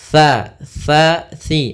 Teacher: sin dia harus daripada huruf tsa tsa makhrajnya ujung lidah kita ujung lidah nempel dengan ee gigi atas gigi seri atas sehingga dia terdengar dengan tsa